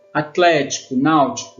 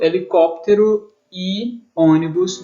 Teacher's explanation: todas essas palavras elas ficaram em um conjunto das proparoxítonas, porque a sílaba tônica é a antepenúltima sílaba, uma antes da última.